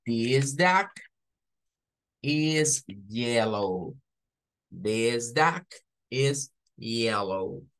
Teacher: en medio de consonantes por eso vamos a pronunciarlo como da se escucha como una a pero termina siendo una u